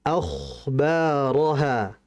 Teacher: Huruf kha itu punya sifat namanya adalah rikhwah, mengalir. Dan kha juga punya sifat isti'la, tebal. Jadi mengalirkan kha-nya disertai dengan ketebalan.